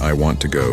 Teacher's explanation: the stress is on want and go. This rhythm is essential for sounding natural.